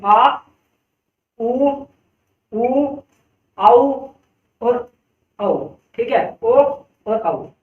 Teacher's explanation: जो हमारा जीभ का पिछला भाग है यानी कि गले के पास वहां भैया जीभ हरकत कर रही है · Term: पश्च स्वर